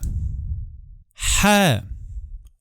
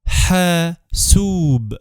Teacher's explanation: Hasub. The sound exactly doesn't exist in English, but it's like a breathy H sound.